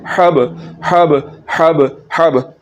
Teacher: बा हुरूफ़ कलकला है, तो यहाँ पर कलकला होगा, इसको हिला के पढ़ना है, इसको झटके के साथ पढ़ना है।